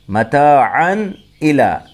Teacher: یہاں تنوین کے بعد حروف حلقی میں سے حمزہ آیا ہے، اس لیے اظہار ہوگا، یہاں غنہ نہیں ہوگا، اخفا نہیں ہوگا۔